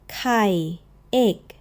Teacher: Kai, egg, opens more like the key in kite, with a soft little puff of air right behind it. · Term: the breathy one